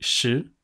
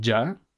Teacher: tenemos el sh como rioplatense, que pues es ruidoso y de alta frecuencia, mientras que en el otro es un ya, como jazz. Y tiene una estructura bastante similar a una ñ, por ende se otonea de la misma manera.